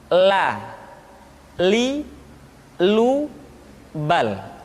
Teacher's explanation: Selanjutnya huruf la diucapkan dengan mengangkat ujung lidah kita, dengan disentuhkan dengan langit-langit.